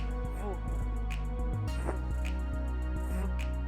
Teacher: This is a voiced labiodental fricative. A voiced labiodental fricative, and it is pronounced by pressing the lower lip against the upper teeth to expel the hair.